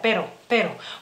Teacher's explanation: no tenemos esa r más vibrante Por así decirlo esa r doble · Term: una sola r